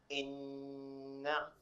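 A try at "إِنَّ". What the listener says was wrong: Very good. Very good. So now the way you recited it, brother, you read it from your nose, which is called Ghunna.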